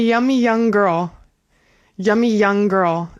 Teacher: You're you're going to only pronounce the Y once in those situations.